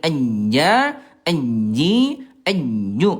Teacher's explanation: Nah ini yang disentuhkannya ujung tengah lidah disentuhkan ke ujung tengah langit-langit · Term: huruf jim